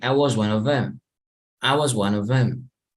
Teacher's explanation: Them se puede pronunciar como M. So you get rid of the first two letters and you pronounce M.